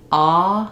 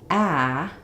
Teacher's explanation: So when the doctor says, say ah, they do that because your tongue is going to be down and out of the way, and they can see into the back of your throat. So when I say ah, my tongue is down and flat. But when I say ah, my tongue is at an angle. The back of my tongue is lifted and the front of my tongue is down.